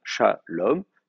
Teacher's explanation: C'est-à-dire que si je dis shalom et que je m'arrête là, il n'y a pas de problème, j'ai le temps d'accentuer ma syllabe. J'ai 2 syllabes, shalom, c'est la dernière qui est accentuée